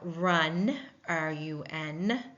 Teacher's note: we're not hearing the U in that word we're hearing the uh sound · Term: short u sound